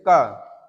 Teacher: क अगर आप बोल रहे हैं तो आवाज कहाँ से निकल रही है, गले से निकल रही है। क गले से निकल रही है ना, तो गले में जब गले से आवाज निकलेगी तो कंठ व्यंजन हो जाएगा आपका।